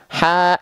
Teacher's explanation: H kecil dilafalkan dari wastul halqi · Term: ha kecil